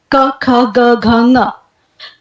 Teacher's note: इसकी स्थिति है कंठ, ये पहली स्थिति है क ख ग घ ङ। तो जब आप इनका उच्चारण करते हैं तो जीभ की जड़ है जो, वो कोमल तालु के संपर्क में आती है। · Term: कवर्ग